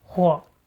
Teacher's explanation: where 火 is a neutral tone. Sounds like the first tone but shorter